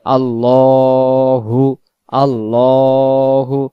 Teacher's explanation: আল্লাহ শব্দের ডান দিকে যখন জবর হয়, আল্লাহ শব্দের লামটাকে মোটা করে পড়তে হয়, উচ্চারণ হবে আল্লাহু, আল্লাহু।